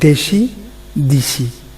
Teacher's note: এখানে কিন্তু অন্তঃস্বরের পরিবর্তে অন্তঃস্বরের কারণে আদ্যস্বরের পরিবর্তন হয়েছে, অর্থাৎ শেষেরটার কারণে প্রথমেরটা হয়েছে। সি ঠিক আছে, বাট দেটা রস্বইকার দি হয়ে গেছে। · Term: স্বরসঙ্গতি